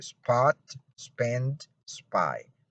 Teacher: when p follows the s as in spot spend spy it is not aspirated · spy it is not aspirated so in these three cases and in any other case that you have the cluster the s plus the p there's no aspiration here so you don't have to try to aspirate the war here